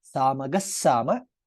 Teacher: Since visarga is followed by sakara, sa becomes double there.